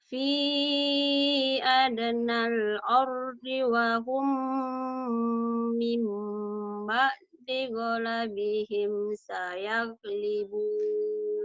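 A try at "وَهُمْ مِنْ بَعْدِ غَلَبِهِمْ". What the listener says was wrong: Mim ba'di, bukan fim ba'di, mim ba'di. Wa hum mim ba'di ghalabihim.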